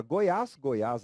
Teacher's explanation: acento agudo som que mostra tonicidade na última sílaba e esse som é um som aberto